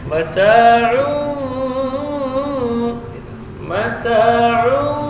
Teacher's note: tanwin ketemu dengan ba, iqlab. Jadi bibirnya rapat tapi tidak ditekan. Tetapi huruf ain tidak boleh cenderung ke khayshum.